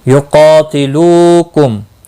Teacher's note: قاف مستعلیہ ہے، پر پڑھا جائے گا، اس کے اوپر کھڑی زبر بھی ہے، ایک الف کے برابر کھینچ کر پڑھیں گے۔